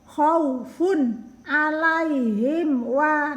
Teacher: khaufun tanwin bertemu ain dibaca jelas. Jelas itu tidak ada en, bunyi dengung. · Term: idhar